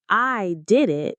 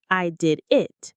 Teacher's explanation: In the first, you're emphasizing that you were the one who did it. In the second, you're emphasizing the action itself. Same words, totally different rhythm, totally different meaning.